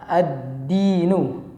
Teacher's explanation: Alif lam bertemu dal, maka diidghamkan huruf dalnya, maka dibaca ad-dinu. Naam, ya, bukan al-dinu. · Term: alif lam syamsiyah